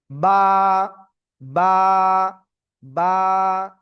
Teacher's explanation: দুই ঠোঁটের ভিজা অংশ থেকে বা অক্ষরটা উচ্চারিত হয়।